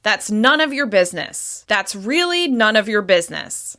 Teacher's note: The falling tone communicates that you want them to drop this topic of conversation immediately.